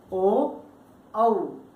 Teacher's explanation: ऊ बोला था या पै बोला था तो उसमें क्या है, होठ जो है हमारे वो अवरोध पूरी तरह से पैदा कर रहे हैं, जबकि यहाँ पर हवा कंठ से बाहर आ रही है और होठ क्या है, केवल गोल होके रह जाते हैं। इसीलिए क्या है, ओ और औ का उच्चारण स्थान कंठोष्ठ होता है।